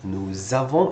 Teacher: It sounds like a Z because the next word starts with a vowel and this one ends with an S. We do the link, nous avons instead of nous avons.